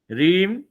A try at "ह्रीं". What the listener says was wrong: पहले ह्रीम आएगा फिर रीम आएगा।